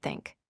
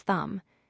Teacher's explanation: The th sound is made by placing your tongue between your upper and lower teeth and pushing air through gently.